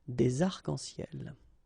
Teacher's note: we don't really pronounce this final S, so phonetically it's almost the same, but then we've got this liaison between the two